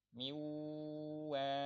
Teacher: kayak nunnya sudah hilang langsung masuk ke wunnya